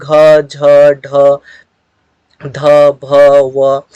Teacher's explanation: इन सभी का उच्चारण करने में हमारे मुख से ज्यादा वायु निकलती है और ज्यादा हमें ताकत लगा करके बोलने की जरूरत पड़ती है। तो इसीलिए हम लोग इसे महाप्राण कहते हैं।